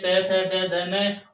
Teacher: त थ द ध न, और इनका उच्चारण स्थान हो गया दांत। ये जो दांत दिख रहे हैं ये दांत, ये दांत के कारण इनका उच्चारण स्थान हो गया दंत्य, मतलब दांत का उच्चारण स्थान नाम ध्वनि हो गई दंत्य।